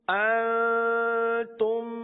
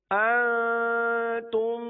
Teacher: شروع کے نون پر اخفاء کا قاعدہ ہوگا، نون ساکن و تنوین والا اخفاء، اور آگے جو میم ہے اس پر ادغام شفوی ہوگا، دونوں جگہ غنہ کریں گے